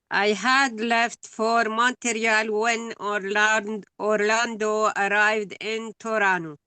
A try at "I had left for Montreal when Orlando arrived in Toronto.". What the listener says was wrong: do not stress had. You stress the verb. Okay, you will say, I left for Montreal yesterday. you will say, I had left for Montreal. Don't say, I had left. No, I had left.